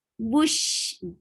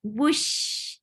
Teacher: circle your lips well for ba, and then go to sheen, and then there your lips should be very straight.